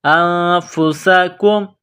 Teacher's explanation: تخرجون انفسکم، حمزہ کو نون کے ساتھ ملانا ہے، نون ساکن کے بعد فا ہے، حروف اخفا ہے، تو یہاں نون ساکن پر غنہ کریں گے، آواز ناک میں چھپائیں گے۔ انفسکم، سین میں سیٹی کی آواز پیدا کریں گے، سین کو باریک کریں گے